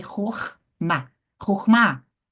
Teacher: Tá vendo aí onde eu subi o tom da voz? No Ma. Rorma, tônica.